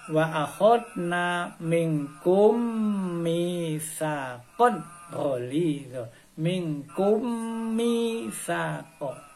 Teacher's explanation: Kummi, minkum mi. Kum, orang mim yang mati ini langsung melebur masuk ke dalam huruf depannya. Nah, jadi wa akhadna minkum mitsaqan. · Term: idgham mimi